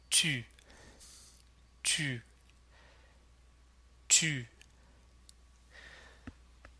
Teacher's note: this vowel sound is formed by touching the tip of the tongue to the back of the teeth and pursing the lips pretty tightly